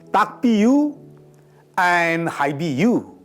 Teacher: P occurs after a voiceless sound, here K. B occurs after a voice sound, here E.